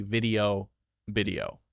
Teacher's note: the thing that makes it a Spanish accent is flipping B and v